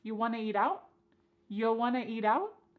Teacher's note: And then we have reduced want to become wanna. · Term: reduction